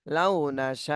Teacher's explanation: শিন আলিফ জবর শা তাহলে সাতে চার আলিফ টান দিতে হবে